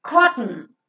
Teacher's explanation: But no, that becomes a disyllabic word with ka, CV structure, and tn. T is a consonantal sound and n here is considered as a vowel sound.